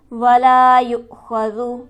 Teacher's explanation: ولا کے لام پر ہمارے پاس حرف مدہ موجود ہے، اسے ہم کھینچیں گے 1 الف کے برابر